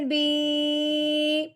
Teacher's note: یا ساکن کو ایک الف کے برابر لمبا کیا جاتا ہے